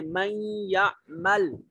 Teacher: نون ساکن ہے اور حروف یرملون میں سے یا آ گیا، نون کو یا کے ساتھ ملائیں گے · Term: ادغام